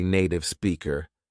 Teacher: stops pronouncing T sounds